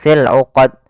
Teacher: Ya, di sini qalqalah, yaitu hati-hati dalam membaca qalqalahnya, yaitu pada lafal qalqalah ini harus dibaca dengan tidak ada tambahan hamzah dan dia harus memantul. Jangan sampai berhenti tidak memantul.